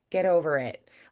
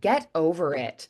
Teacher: Like it sounds like it's all one word